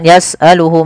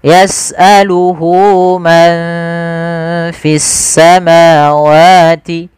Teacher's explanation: Panjangnya berapa harakat untuk mad silah qasrah? Yaitu dua harakat. Maka hunya di sini panjangkan. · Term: mad silah qasirah